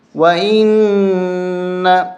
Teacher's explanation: یہاں نون پہ غنہ کریں گے، نون کے اوپر تشدید ہے ، غنہ کریں گے، اور یہاں پر اب وقف کریں گے